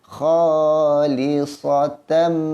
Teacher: Tanwin bertemu dengan mim, maka dengung juga dengan dua harakat. Kha, dua harakat.